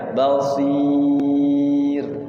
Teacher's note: Sebelum ro didahului oleh harokat kasroh, maka dia jadi tipis.